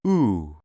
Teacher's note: produced by positioning the tongue back and high in the mouth the jaw is in an almost closed position with the lips tightly rounded making the corners of the mouth push together the ooh is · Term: vowel sound ooh